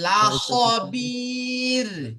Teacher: র সাকিনের ডান দিকে জের এসেছে তাহলে রকে বারিক করে পড়তে হবে